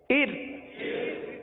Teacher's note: ار والی را کو باریک پڑھیں گے، کیونکہ را ساکن سے پہلے زیر ہے، لہذا را کو باریک پڑھیں گے.